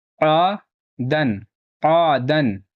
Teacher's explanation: الف سے پہلے زبر ہے، تھوڑا کھینچ کر پڑھنا ہے، اور یہاں دال کے اوپر تنوین ہے، نون ساکن کی آواز آئے گی اور تنوین کے بعد یا آتا ہے تو یا نہیں پڑھا جاتا ہے۔